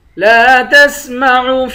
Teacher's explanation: لام کو ایک الف کی مقدار کھینچ کر پڑھیں گے